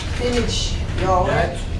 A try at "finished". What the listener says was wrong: Not, no ed sound. Finished. Not finish it.